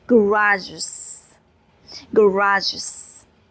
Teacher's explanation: before e s we have j sound. It means it is sibilent sound. If it is sibilent it means it makes is sound.